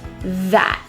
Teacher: The word that involves that voiced TH. Feel your vibration with your tongue out.